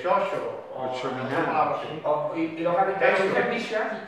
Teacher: No distingue she de che. No lo distinguimos.